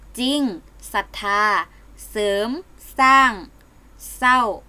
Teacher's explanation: จะออกเสียงเพียงพยัญชนะตัวหน้าเท่านั้น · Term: ควบกล้ำไม่แท้